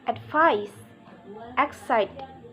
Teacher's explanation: primary stress on the second syllable